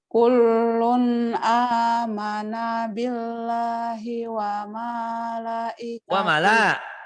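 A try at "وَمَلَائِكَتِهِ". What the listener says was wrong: Wa mala bukan wama, itu lam ada. itu ada tasdidnya ya. Kullun amana billahi wa malaikatihi. Wa malaikatihi. Wa malaikatihi.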